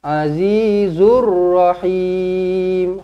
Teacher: Wa inna rabbaka lahuwal azizur rahim. Azizur zur alif lam syamsiah. Masukkan terus dekat ra sabdu.